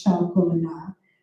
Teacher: In French, which is syllable timed, it's chocolat, because every syllable gets its due.